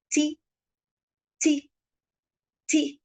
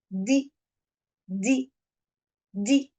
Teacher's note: my tongue is going to be behind my upper teeth and it is going to push or hit my teeth from behind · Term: T and d